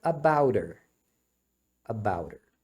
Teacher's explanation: O her, eles omitem o H, e o T, quando fica entre vogais, eles pronunciam como um R.